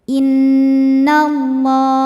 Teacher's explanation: dengung inallah lam pada lafaz Allah atau lam jalalah dibunyikan secara tafim karena huruf sebelumnya berbaris fathah maka dibacanya tebal